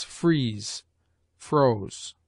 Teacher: It has the sound, as its name izzard or S hard expresses, of an S uttered with a closer compression of the palate by the tongue